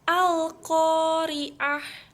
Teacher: Karena terdapat huruf alif lam bertemu dengan qaf. Cara bacanya jelas dan terang. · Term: Al-Qamariyah